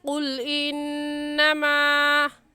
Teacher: انما میں نون مشدد ہے اور نون مشدد پر ہمیشہ غنہ ہوتا ہے